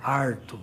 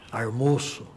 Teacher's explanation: o famoso R retroflexo, que é típico da área caipira